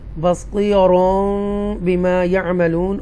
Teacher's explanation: after تنوین با is coming, دین میم بھی بیچ میں لگے گی، اور تنوین جو نون ہے وہ مرج ہو جائے گا، ساؤنڈ مکس ہو جائے گا میم کے ساتھ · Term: اقلاب